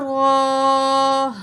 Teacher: را کے اوپر کھڑا زبر ہے 1 پوائنٹ کھینچ کے پڑھیں گے